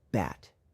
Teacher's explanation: The B sound is made by bringing both lips together and then releasing a burst of air. When pronouncing the B sound, your vocal cords should vibrate. It is a voice sound, meaning that your vocal cords are engaged while producing the sound.